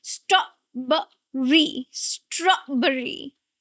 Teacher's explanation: Strawberry. And the stress is not on b. No, it's on straw. The first syllable.